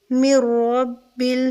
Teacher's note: مِن رب را کو پر کریں گے اور را کو سختی کے ساتھ بھی میم کے ساتھ ملا کر پڑھیں گے. نون ساکن کے بعد را آ رہی ہے تو یہاں پر ادغام ہوگا مگر غنہ نہیں ہوگا، اس کا خیال رکھیں گے.